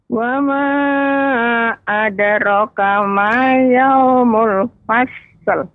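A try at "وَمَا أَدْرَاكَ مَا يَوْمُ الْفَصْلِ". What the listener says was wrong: Ra dibaca 2 harokat Nek, tadi kurang panjang sedikit. Jadi koreksiannya Nek tadi untuk fasl ya. fasl.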